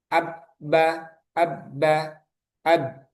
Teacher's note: maka organ kita berhenti di posisi huruf ba, yaitu di kedua bibir.